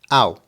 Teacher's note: The AU can be pronounced like the OW in how, but just make it a little quicker.